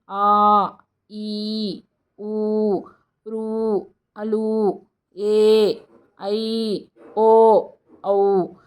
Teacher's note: దీర్ఘచ్చులు అంటే రెండు మాత్రల కాలంలో ఉచ్చరించబడేవి అనగా కొంత ఎక్కువ టైం తీసుకుంటది